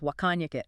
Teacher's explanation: The T in what disappears or becomes what's called a glottle stop and the vowels get reduced.